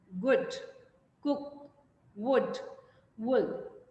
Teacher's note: the lips are rounded and the center and back of the tongue is raised towards the soft palate so here the back of the tongue is involved for the